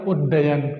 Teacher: उत्धन डयन, तो त के बाद ड आ रहा है, और त के बाद अगर ड आ रहा है, त के बाद ड आ रहा है तो क्या बन जाएगा? त का ड बन जाएगा।